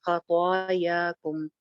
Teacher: ख छोटी हो जाएगी आवाज, और तो या ये लंबी हो जाएगी।